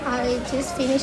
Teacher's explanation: The first one is in the word just. The participant pronounced the word as just with the final T dropped. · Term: elision